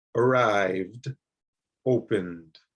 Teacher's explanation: on some of these words, like opened and arrived, the sound is not quite a D and not quite a T. It's even something in the middle of that.